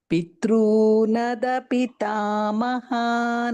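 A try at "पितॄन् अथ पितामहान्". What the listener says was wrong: Pitrunada is not there. Pitrunatha, second tha. Pitrunatha pitamahan.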